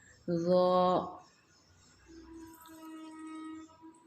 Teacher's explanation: ज़ुबान की नोक दांतों पे रखेंगे